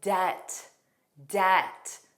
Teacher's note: Notice that B does not exist in pronunciation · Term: silent B